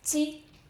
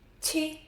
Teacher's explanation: Ji, gentle, the paper barely moves. Qi, strong puff.